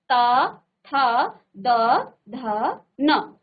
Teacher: ध न तो देखिए दांतों से इनका उच्चारण हो रहा है आपकी जो जीव है वो दांतों को टच करती हुई इसका उच्चारण कर रही है